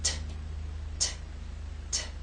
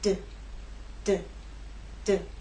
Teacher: These 2 consonant sounds are made basically the same way, but T is quiet, it's unvoiced, and D is voiced. So you'll feel no vibrations when you make the true T sound, t, t, t. And you will feel vibration when you make the D sound, d, d, d.